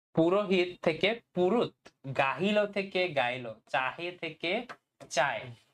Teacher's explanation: দুইটা স্বরের মাঝামাঝি হকারের লোপ হয় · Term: হকার লোপ